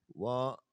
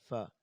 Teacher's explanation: جب آپ اپنے اوپر والے دانتوں کو نیچے والے ہونٹ کے درمیان لگائیں گے تو اسے فا ادا ہوتا ہے، یوں کر کے فا، تو اسے واو نہیں پڑھتے، واو پڑھنا غلط ہوگا۔ واو ہونٹوں کو گول کر کے پڑھتے ہیں، ملاتے نہیں۔